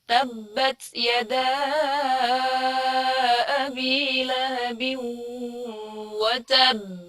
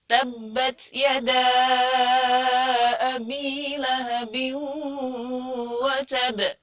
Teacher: Memang disukunkan, tapi karena ada tasydid, jadi bacanya kita seperti lebih tebal.